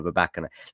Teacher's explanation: As far as I'm aware, listening to her speak, it is on the second syllable